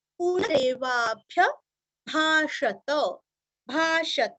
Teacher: भाषत यहाँ का त पूरा पढ़ना है